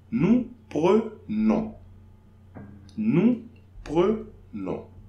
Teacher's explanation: Now, for nous, I'm not pronouncing the S.